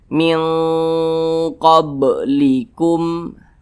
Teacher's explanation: Akan tetapi dia di sini ab'ad. Jadi kadar dengungnya itu dia lebih tinggi, lebih dominan. Jadi lebih condong berbunyi eng gitu. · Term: ikhfa hakiki ab'ad